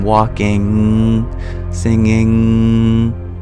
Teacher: we bring the tongue up to restrict the air flow completely and then the main um place of reverberance is entirely in the nasal cavity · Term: pure nasalization